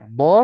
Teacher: huruf DD ketika dia kasrah maka tetap tebal